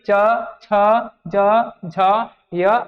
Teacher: च छ ज झ य और श को ताल से बोलते हैं